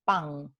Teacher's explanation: La nasal alveolar N, cuando está al final de palabra, se vuelve en una velar. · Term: velarización